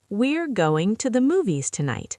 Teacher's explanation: Stress going, movies, tonight.